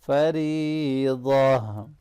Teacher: रा के नीचे ज़ेर है इसलिए इसको बारीक पढ़ेंगे